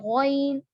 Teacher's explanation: अदनाए हलक से अदा होगा गौइन, लेकिन गौइन को मोटा पढ़ेंगे।